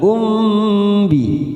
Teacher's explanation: mim sukun bertemu ba bacaan Ikhfa Syafawi kita tekan tiga ketuk